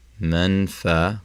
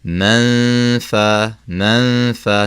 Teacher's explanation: Now the difference here is we're not taking out the noon and we're not placing it with a fa. We're not saying maffa, maffa. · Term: ikhfa